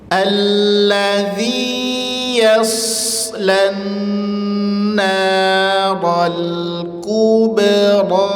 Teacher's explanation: Kafnya monyongkan. Bnya senyumkan rnya tebalkan.